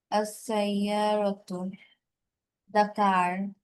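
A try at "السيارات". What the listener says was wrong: টান আছে দেখো, র এর পরে টান।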